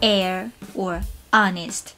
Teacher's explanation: In English, for some words, we choose not to pronounce the initial H, like air or honest.